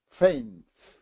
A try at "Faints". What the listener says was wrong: More S. Faints.